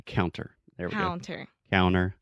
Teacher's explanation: a lot of times I don't articulate that t